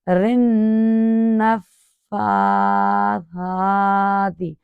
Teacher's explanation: تشدید والے حرف کو ادا کرتے ہوئے کھڑا زبر کو ادا کیا گیا ایک الف کے برابر